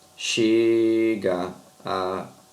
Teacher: Aqui a gente junta, ó, são vogais idênticas. Vogais idênticas você vai juntar, tá bom?